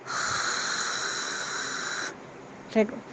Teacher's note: la J es un sonido fricativo y por lo tanto puede ser prolongado